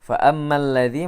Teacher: alif lam syamsiyah di sini bunyi mimnya langsung masuk ke lam